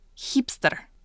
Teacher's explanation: And it is the letter H. It's kind of like our H sound, but it's a little scratchier.